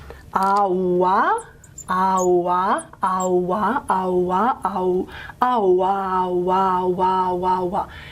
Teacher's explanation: Eventually that u changes to a w. Okay, so the high back vowel, high back rounded vowel, has become a labiovelar semivowel or approximant or glide.